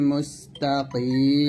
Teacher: যদি আমরা এখানে থামি তাহলে মিমটা কি হয়ে যাবে সাকিন হয়ে যাবে